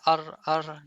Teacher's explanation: Ro, adanya aliran udara dikarenakan sifat takrir pada huruf ro. Ya, jadi sifat pengulangan itu loh, ar.